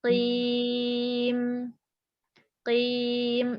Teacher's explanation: Kalau qaf paling belakang, nempel ke langit-langit lembek.